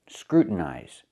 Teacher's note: And the TIN is not stressed. So we pronounce it as a stop T and go directly to the N.